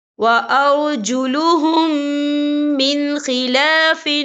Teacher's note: أَوْ يُصَلَّبُوا أَوْ تُقَطَّعَ أَيْدِيهِمْ وَأَرْجُلُهُمْ، یہ دیکھیں وَأَرْجُلُهُمْ، یہاں میم ساکن ہے، میم ساکن کے بعد جو ہے میم مشدد والا حروف آ رہا ہے، تو یہاں پر ادغام شفوی ہوگا، ہم پچھلے میم کو اگلے میم میں مدغم کریں گے اور ہم یہاں غنہ بھی کریں گے۔